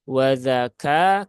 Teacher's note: kafnya pastikan ada hamsnya dan hamsnya kecil saja ya kecil saja